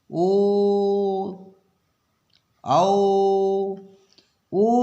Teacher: ओ बोलेंगे ना तो कंठ भी रहेगा, होंठ दोनों लगेंगे। तो ये हो गया कंठ और ये हो गया ओष्ठ।